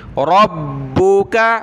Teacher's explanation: را کو با کے ساتھ ملانا را کو موٹا کریں گے با کے اوپر شد ہے